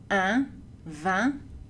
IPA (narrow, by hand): ɛ̃